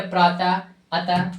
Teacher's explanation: विसर्ग का उच्चारण करते समय हा की ध्वनि निकलता है